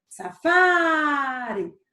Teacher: Onde foi que eu passei mais tempo chamando? No fá. Então, vai ser uma paroxítona, porque foi a penúltima sílaba que eu falei.